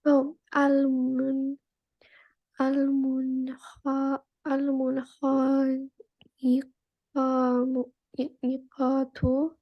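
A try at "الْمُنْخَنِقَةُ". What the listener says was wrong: Yeah, again, we don't have to stretch the simple zabar there, okay? Yeah, almun khani qatu.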